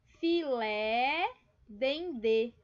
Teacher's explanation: vejam aqui, ó, a mais forte é a última sílaba, né?